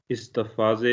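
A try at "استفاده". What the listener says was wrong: इस्तिफाजे ना इस्तिफादे, इस्तिफादे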